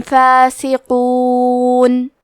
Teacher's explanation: کلمت فاسقون میں حرف القاف کو موٹی آواز میں پڑھنا ہے